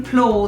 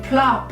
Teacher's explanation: in plow the vowel says O because it's wide open. There isn't a consonant closing it in, but in plop it says it's short sound ah because the consonant P is closing it in.